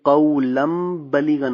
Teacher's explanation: ویسے قَوْلًا بَلِيغًا قولاً بلیغن تھا تو یہ قولم بلیغن ہو گیا، لام دو زبر کے بعد میم آ رہی ہے تو قولم بلیغن ہو گیا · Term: اقلاب